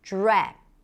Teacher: when you connect the DR, you hear a J sound